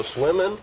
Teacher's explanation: To pronounce swimming, have in mind that the size of the syllable indicates where the accent or stress is. In this case, the accent is in the first syllable, corresponding to swim.